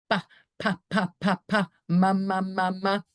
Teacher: Those are all bilabial, so your lips need to be closed.